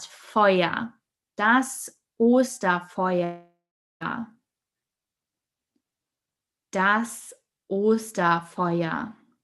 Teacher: the R at the end of fire in German is a silent R. So you don't actually hear that R. So we don't say Feuer, but Feuer.